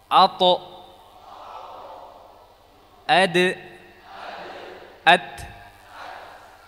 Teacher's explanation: keluar dari ujung lidah bertemu dengan pangkal gisri atas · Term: huruf th dal dan ta